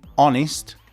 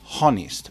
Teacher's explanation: There is no H. Well, there is a H in the spelling, but in the pronunciation, no.